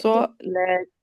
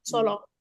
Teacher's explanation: सौला कहते हैं, सौला। वो सौला नहीं है, लाम बारीक पढ़ा जाएगा।